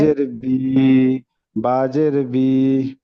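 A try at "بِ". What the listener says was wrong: পড়ায় আপনার টান হয়ে যাচ্ছে। আপনার প্রত্যেকটা মানে বানানে টান হয়েছে, বা জের বি বলে টান দিয়ে ফেলছেন।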